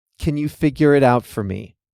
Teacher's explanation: The two words blend together, so they sound like one. In fact, it sounds strange to say them as two distinct words.